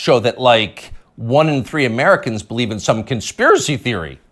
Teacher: You'll notice the upspeak, the rising inflection at the end of the sentence. That's a familiar tick in Brooklyn.